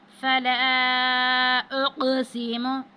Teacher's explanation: اب لام پر جو ہے الف پر مد ہے 5 الف کے برابر، اس کو کھینچیں گے